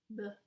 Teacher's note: The pronunciation of the B, it's with your two lips touching each other. B. It's bilabial.